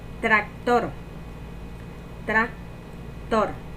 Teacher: La sílaba tónica es tor, porque decimos tractor